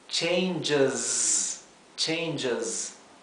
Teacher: la s final en changes no es la s suave del español · changes fíjense que la esta letra i casi no se pronuncia es casi como si no hubiera como si pasáramos del sonido J al Z de la s y la s final en changes no es la s suave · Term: la Z